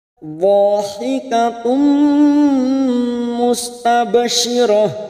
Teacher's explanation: Dha fathah diikuti alif huruf dhad 2 harokat kita panjangkan